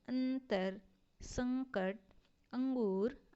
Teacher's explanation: अनुस्वार ध्वनि नाक से निकलती है इसका जो उच्चारण होता है वह नाक से होती है और इसका प्रयोग स्वर्ग के बाद होता है जैसे अंतर संकट